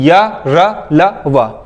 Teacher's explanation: Clear. और ये जो अंतस्थ व्यंजन है ये सारे सघोष है और ये अल्प प्राण है, इनको बोलते वक्त मुंह से ध्वनि कम निकलती है, ठीक है।